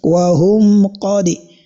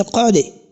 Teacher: The dal, which happens to be having qalqala, and this type of qalqala is what is known as the sughra. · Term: qalqalatu sughra